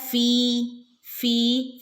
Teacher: കൊടുക്കുകയും ചെയ്യാട്ടോ ഓക്കേ രണ്ട് ഹറക്കത്ത് അവിടെ നീട്ടുകയും ചെയ്യുക ഇല്ല ഫീ ഫീ ഫിന്റെ കൂടെ യാ വന്നിട്ടുണ്ട് യ മദ് ഫീ രണ്ട് അക്ഷരം നീട്ടി കൊടുക്കുക